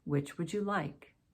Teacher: Falling intonation. It's not a yes or no question.